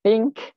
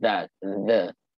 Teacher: Tapi untuk the ni, dia TH juga. Think pun TH juga. The pun TH juga. Itu pelik bahasa Inggeris ni. Satu bunyi tak bersuara, satu bunyi bersuara.